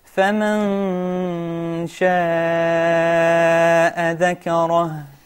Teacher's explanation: make sure that ذال doesn't have a qalqala